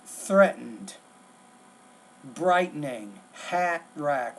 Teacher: In American English, like threatened, brightening, hat rack, we don't really pronounce that T in the middle. It's more of kind of what's called not a flap, it's a glottal stop.